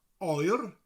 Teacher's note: Got a rolling R at the end of it. That R sound, oer.